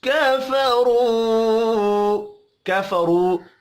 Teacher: را کے اوپر پیش ہے، را کو پر پڑھیں گے، واو مدہ ایک الف کے برابر کھینچ کر پڑھا جائے گا.